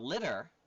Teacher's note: if I'm talking about litter all of a sudden the t's become D's · The T's convert to D's when you pronounce them